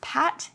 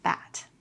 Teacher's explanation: These words might sound very similar, but the P in pat sounds slightly harder than the B in bat. When you say pat, some air will come out of your mouth. But when you say bat, this won't happen.